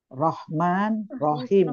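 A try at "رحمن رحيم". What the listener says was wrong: Iya, bagus. Rahman, Rahim.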